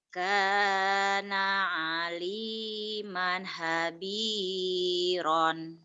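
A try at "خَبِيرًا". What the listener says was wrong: Habiron, habiron. Orang ada titiknya. habiron sih? Ini masa habiron, hobiron atuh ada titiknya.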